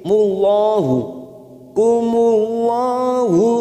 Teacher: lam jalalah yang didahului dumah, kita baca tafkhim